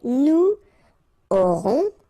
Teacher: final S not pronounced, O and N together, nasal, on, A-U-O.